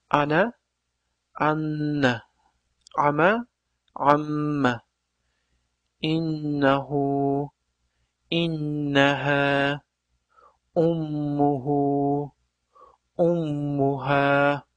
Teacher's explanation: nun hamda mim harflari tashdid bilan kelganida g'unna qilinadi hamda biroz ya'ni bir harakat miqdorida ushlab turib o'qiladi